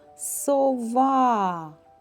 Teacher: в цьому слові наголошеним є склад ва